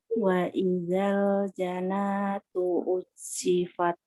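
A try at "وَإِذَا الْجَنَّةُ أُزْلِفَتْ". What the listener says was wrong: Nah, ini ditahan. Nah, ingat-ingat ya Bun nih, yang nun sama mim kalau ada tanda tasydidnya ditahan. Ya, dimanapun di dalam Al-Quran ya, dimanapun dalam Al-Quran ada nun ada mim ditahan.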